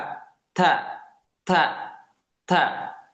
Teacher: Yang keluar itu nafas, ya, udara, bukan desis. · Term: huruf ta